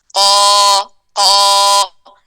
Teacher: اچھا، قال قائل، قاف کے ساتھ الف مدیہ کو پر کرنا بغیر ہونٹوں کو گول کیے، قو نہیں ہے، قا، اور لمبائی میں کھولنا، چوڑائی میں نہیں کھولے گا، اور بہت زیادہ مبالغہ کے ساتھ نہیں کھولنا، قا اس طرح کر کے نہیں ہوئے گا. قا، زبان کا آخری حصہ اوپر انفتاح کے ساتھ، پورا اوپر تالو کے ساتھ ٹچ نہیں کرنا، قو اس طرح کی آواز آ جائے گی اگر ہم پورا ٹچ کریں گے نرم تالو کے ساتھ.